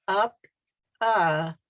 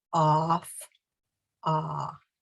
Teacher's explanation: chin does not go down my mouth is not open because when i say up and start to open my mouth uh becomes ah